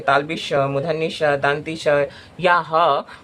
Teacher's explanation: इन व्यंजनों में हवा जो है वह मुख में टकराती है और गर्मी पैदा करती है। अगर आप बोलते हैं ताल्लविश, मुधन्य श, दंती श या ह आप उच्चारण करिएगा और हवा को और अगर हाथ को अपने मुख के सामने लेकर जाइएगा तो आपको पता चलेगा कि ये मुख ह मुंह से गर्म हवा बाहर आ रही है। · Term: उष्म व्यंजन